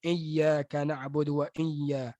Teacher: Dia baca huruf hamzah daripada corong hidung.